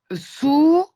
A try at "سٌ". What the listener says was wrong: Alors, sous avec deux voyelles. Donc, ça veut dire c'est le N qu'on rajoute. Ça fait sun.